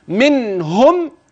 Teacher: النون في كلمه منهم اياك ان تغن فيها فانها واضحه بينه ظاهره وهذا يسمى اظهار حلقي